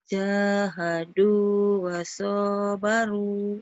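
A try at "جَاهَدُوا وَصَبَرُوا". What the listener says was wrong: Bukan, soalnya pendek. Ayo. Jahadu. Jahadu wasobaru. Jahadu wasobaru.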